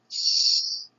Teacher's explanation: The difference is between the force you use to pronounce this sound. In phonetics, we call sh an unvoiced sound, which you can pronounce for a long time.